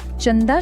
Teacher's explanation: त वर्गाचा मेंबर आहे आणि त्या वर्गाचा अनुनासिक आहे न म्हणूनच चंदा मधल्या अनुस्वाराचा उच्चार न असा होतो